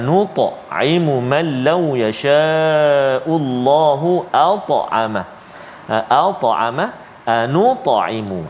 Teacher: iaitulah dua kalimah yang melibatkan huruf ta yang bertanda sukun ataupun mati, iaitulah qalqalah sughra